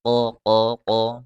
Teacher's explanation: Huruf qaf, makhrajnya pangkal lidah naik ke langit-langit bagian yang lunak.